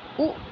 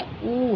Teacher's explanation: होष्ठ या ओष्ठ से जो बोले जाते हैं हर्ष स्वर में उ और दीर्घ स्वर में ऊ है